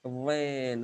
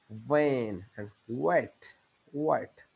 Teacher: जब आप वैन बोलेंगे वैन, तो आप महसूस करेंगे, होंठों पर अपनी फिंगर्स को रखें तो आप महसूस करेंगे कि आपके होंठ जो है वो साइडों की तरफ फैल रहे हैं। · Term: वी वाली वाह